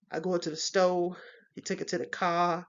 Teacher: in urban Styles we'll see that R is reduced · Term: non rotic